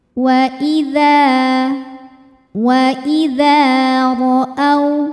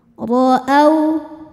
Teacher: Wa idza ra'au, huruf ra dibaca secara tafkhim karena ra berharokat di atas yaitu fathah. Cara membacanya adalah ditebalkan dengan cara mengangkat pangkal lidah.